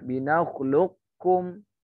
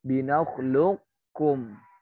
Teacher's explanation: Si qafnya ada tapi tidak dianggap, nggak usah dibaca qafnya. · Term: idgham kamil